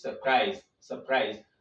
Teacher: two syllables the first is Sir and the second is Christ in this case you stress the second syllable because it is a verb